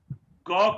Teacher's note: अल्प प्राण है, क्योंकि इसके लिए हमें कम सांस लेने की जरूरत पड़ती है, कम सांस की जरूरत पड़ती है।